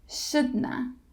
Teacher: And instead of have, just make the schwa sound.